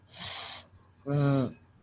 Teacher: The lower lip touching the upper teeth, such as f and v. One lip addresses the teeth. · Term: Labiodental